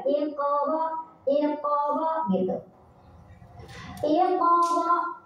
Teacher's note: Cara bacanya, pantulannya kecil aja ya, ngalir aja. · Di sana ada hukum bacaan qalqalah sughra. Karena ada huruf qalqalah yang sukunnya asli, bukan karena disukunkan, yaitu huruf qaf.